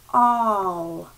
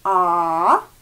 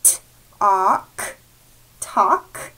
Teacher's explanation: The A-L together in a word does not sound like al, it sounds like aw.